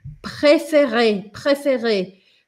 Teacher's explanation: eu tenho que passar de um som que eu uso bem frontal para um som bem posterior